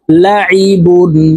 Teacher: এই আইনকে হালুকের মধ্যখান থেকে চাপ দিয়ে উচ্চারণ করতে হবে আমরা অনেকে এই আইনের উচ্চারণ হামজার উচ্চারণ করে থাকি লাইবুন হালুকের